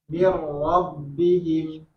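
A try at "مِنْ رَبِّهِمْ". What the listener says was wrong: Mirnya tipis. Waktu kasroh itu jangan tebal.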